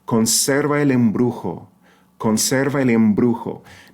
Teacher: this B in embrujo is the hard B from bomb because it follows a nasal consonant M